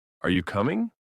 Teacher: For example, when we ask a question like, are you coming? Our voice rises at the end. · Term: intonation